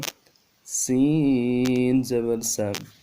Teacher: سیٹی والا حرف ہے، سیٹی کو خوب نکالنا ہے، البتہ باریک سیٹی ہوگی۔